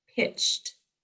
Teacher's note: ch is an unvoiced sound. So ED is unvoiced, making the t sound.